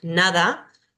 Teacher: la nasal dental que si la tenemos en español cuando decimos nada es una n dental